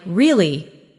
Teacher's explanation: when you ask a question like really, your voice goes up slightly at the end. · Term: Intonation, intonation